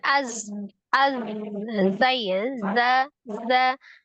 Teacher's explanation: atas dan bawah mendekati ujung gigi seri bagian bawah ya kemudian dia memiliki sifat asfir ada desisan